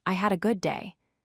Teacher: Here we focus on the D in had. Feel that vocal cord vibration.